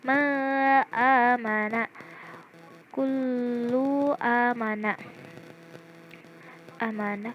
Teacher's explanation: maka harus dibaca izhar dengan membaca jelas bacaan setiap hurufnya tanpa ada gunnah, dengung